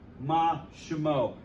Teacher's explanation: you have to reduce the vowel under the shin